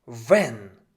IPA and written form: vɛn (wenn)